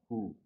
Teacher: Ha juga dari pangkal tenggorokan sama dengan hamzah.